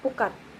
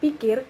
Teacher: bunyi P pada pu pada kata pukat tadi, nah diucapkan dengan kedua bibir dibundarkan, bukan dilebarkan seperti pada kata pi pada kata pikir